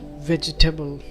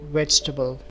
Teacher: So the top pick of the most mispronounced word in the world is vegetable, which is quite often pronounced as vegetable. The A is actually silent and the word sounds more like vegetable.